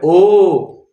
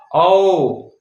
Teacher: कंठ का पूरा प्रयोग है किंतु होठों के साथ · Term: कंठ जोड़ होठ